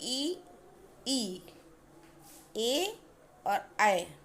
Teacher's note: तो अग्रभाग की अगर हम बात करते हैं तो बड़ी ई, ए और ऐ, इस तरह के अग्रभाग ये जो निकलते हैं स्वर, ये जीभ के अग्रभाग से होकर के निकलते हैं